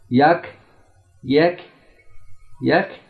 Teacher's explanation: काफ की आवाज़ बारीक सॉफ्ट है और बग़ैर झटके की है